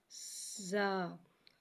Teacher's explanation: زا، زا کو ایک الف یعنی 2 حرکات کے برابر کھینچ کے پڑھتے ہیں۔ زا میں سیٹی آئے گی، اسے سیٹی کی آواز کے ساتھ ظاہر کریں گے